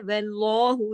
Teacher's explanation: लाम मोटा पढ़ेंगे, वाव के जबर की वजह से